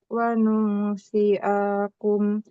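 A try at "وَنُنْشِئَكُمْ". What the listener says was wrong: Shin. Wa nunsyi'akum. Shi. Jangan panjang. Wa nunsyi'akum. Wa nunsyi'akum.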